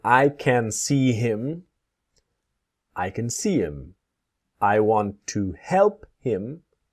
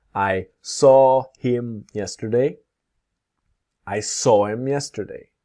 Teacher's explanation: what happens to the word him when we speak quickly, the H disappears